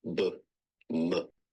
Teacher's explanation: sounds are produced with both lips